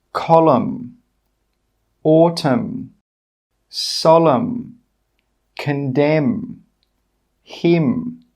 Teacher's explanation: In all of these words, we are not pronouncing the N. We are just making that /m/ sound.